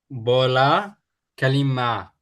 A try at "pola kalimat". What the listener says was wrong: No, it's not bola. Bola is ball. It's pola with P.